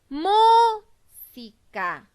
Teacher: La sílaba que tiene mayor fuerza de voz es la sílaba mu. Eso quiere decir que esa es mi sílaba tónica y está ubicada en la antepenúltima sílaba, porque si observan, la última sílaba es ka, la penúltima sílaba es si.